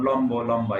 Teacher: এরপর বফলার সাথে, বয়ের সাথে যদি বফলা যুক্ত হয়, যেমন তিব্বত, এখানে বয়ের উচ্চারণ স্পষ্ট থাকবে। এরপর ম বর্ণের সাথে যদি বফলা যুক্ত হয় তাহলেও বয়ের উচ্চারণ স্পষ্ট থাকবে